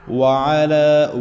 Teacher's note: وعلی، واو پہ ہونٹوں کو گول کریں گے، عین کو حلق کے درمیان سے ادا کریں گے